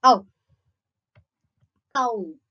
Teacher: the back of the tongue is low in the mouth in the fully open position. Got? Then it quickly glides to a height between close and half close